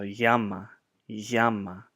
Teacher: in modern Greek, the G is pronounced like a ya at the beginning of a word, and then within the word it's kind of like a like down in the back of the throat.